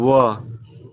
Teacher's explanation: व का उच्चारण करने के लिए ऊपर के दांत और निचले के होठ का मिलाव होना जरूरी है। जैसे व, ऊपर वाला दांत और नीचे वाला होठ में टच हो रहा है, व।